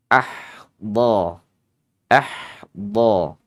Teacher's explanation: huruf d ini sifatnya adalah rakhawah lemah ya